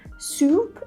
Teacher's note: In the South, this oo sound is closer to the front of the mouth, right? So when we say soup, it's like very close to the front instead of just soup in standard American accent.